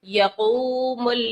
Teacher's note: واو ساکن سے پہلے پیش ہے، واو مدہ کا قاعدہ لگائیں گے، کھینچیں گے